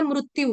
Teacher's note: क्योंकि संस्कृत में रू होता है री नहीं होता